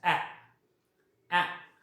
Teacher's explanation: so front part of the tongue is used